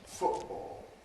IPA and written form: ˈfʊʔbɔːl (football)